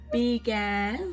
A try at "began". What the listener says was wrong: Why you say D? B. Began. Began.